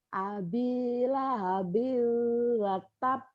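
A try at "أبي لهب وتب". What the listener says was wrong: Itu jangan jangan kebanyakan. Biunya cuma sedikit aja, jangan kebanyakan biu wiu wiu wiu wiu, jangan ya.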